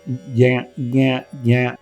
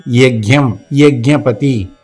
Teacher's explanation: It is a mixture of ij, the third of the chavarga, and nya, the nasal of the chavarga put together. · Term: conjunct consonant